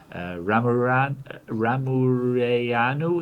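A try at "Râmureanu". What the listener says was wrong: Ramureanu, I guess. The A actually should have a little hat, I guess, and it makes a different sound.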